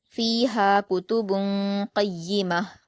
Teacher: با کی تنوین کی آواز کو ناک میں چھپا کر غنہ کے ساتھ پڑھا جائے گا، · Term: اخفا